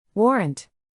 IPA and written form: ˈwɔːrənt (warrant)